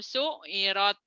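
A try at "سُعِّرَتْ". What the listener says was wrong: Kurang. Su'irat. Ain ya. Su'irat. Bukan mad, itu mah mad. Ini mah ini nyamber su'irat. Enggak panjang.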